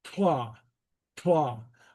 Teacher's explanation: The Gaelic T is pronounced with the tongue against the front teeth. Okay, so if you do an English T, like in the middle of the palate, tla, it has to go tla.